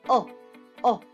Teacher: it's a very back sound it's very open from the roof of the mouth far away or low